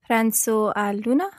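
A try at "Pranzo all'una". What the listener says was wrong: Remember to bounce on that double L there.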